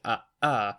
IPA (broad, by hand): ʔ